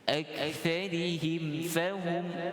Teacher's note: maknanya tidak ada dengung pada mim. Dia baca dengan satu harakat dan terus masuk pada fahum. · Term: izhar